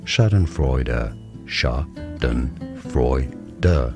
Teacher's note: Stress on the first syllable.